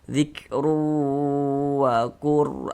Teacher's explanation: Bunyi tanwinnya dimasukkan ke huruf wau. Kita baca zikru. Jangan dibaca zikrun. Jangan. Tapi dibaca zikru begitu bunyi tanwinnya masuk ke huruf wau kemudian didengungkan. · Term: idgham bighunah